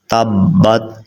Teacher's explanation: با حروف قلقلہ میں سے ہے، تو یہاں پہ آپ نے قلقلہ کرنا ہے